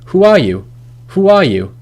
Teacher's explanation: actually there is a linking w sound in between these two words, because who ends in a vowel and are starts in a vowel, and we can't really say those words smoothly without inserting some sort of consonant sound like a w or a y.